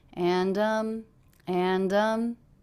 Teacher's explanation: the intonation of the voice is going up at the end and um signaling comma not a period